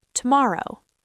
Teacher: Native speakers often shorten the first O.